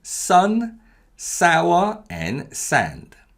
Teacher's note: for the s sound the muscles are tense around the mouth and the release from the initial position is much sharper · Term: double consonants